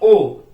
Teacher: ओ का जो उच्चारण स्थान रहेगा कंठोष्ठ रहेगा। कंठ यहाँ पर भी है लेकिन ओष्ठ आगे आ रहा है, ओष्ठ आ रहा था, ओठ यहाँ पे उच्चारण स्थान यहाँ पे बन रहा है, लेकिन हमें चाहिए क्या है, मूर्धा चाहिए, तो इनकी भी नियुक्ति नहीं हो पा रही।